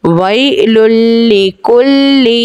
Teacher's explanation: دو پیش کی تنوین کے بعد لام ہے، حرف یرملون کا، ادغام بغیر گننے کے کر کے پڑھیں گے۔